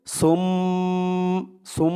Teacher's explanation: এখানে ঈদগামে বাগুন্নাহ গুন্নাহ করতে হবে। নাফ সুম সিন মিম দুই পেশ সুম সুম এরকম গুন্না করতে হবে, ঈদগামে বাগুন্না।